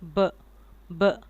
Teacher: उसमें दोनों लिप्स आपके मिलेंगे, फिर आप ब साउंड निकालेंगे